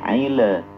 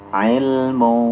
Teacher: Dan lam itu tidak memiliki sifat qalqalah, ya. Nah, jadi dibaca ilmu, jadi jangan aile. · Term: izhar